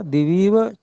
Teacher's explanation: उसमें दी में जो ई है वो तो अनुदात्त है, लेकिन वी में जो ई है वह उदात्त है। फिर जो इव पद है, उसमें ई और व में जो अ है, वो दोनों ही अनुदात्त हैं।